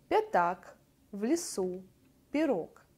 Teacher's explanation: После мягких согласных безударные гласные «а», «э», а также «и» в первых предударных слогах становятся похожим на звук «и», «э», «и» близкий к «э», или, как еще говорят, «и» с призвуком «э»